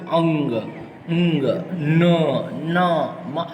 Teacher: મોંનો માર્ગ અવરોધને કારણે બંધ થઈ જતા હવાનું મોજું નાક દ્વારા પસાર થાય ત્યારે અનુનાસિક ધ્વનિ સંભળાય છે. અહીંયા વર્ણો આપ્યા છે, એમાં જુઓ અંગ, ઊંગ, ન, મ આ બધા અનુનાસિક ધ્વનિ છે.